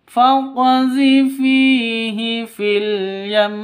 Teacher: yam itu ditahan sampai dua ketukan karena ee karena waqaf.